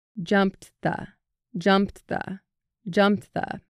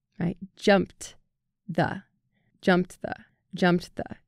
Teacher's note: the faster you speak the shorter that Ed at the end of jumped sounds